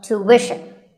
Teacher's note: it's not ishin, it's wishin. Tuition. You have to put the w sound there.